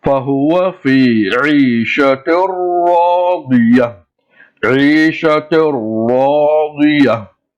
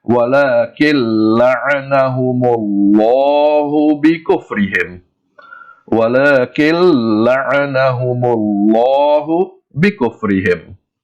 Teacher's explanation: join the 2 words together and pronounce the joining sound without Gunna. That is, without stretching the joining sound.